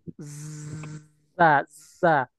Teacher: huruf zai tidak punya sifat hamas. Jadi jangan keluarkan udaranya. Za, za. Jadi di dalam saja.